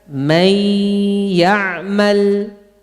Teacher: Di pangkal hidung ada suara gunnah.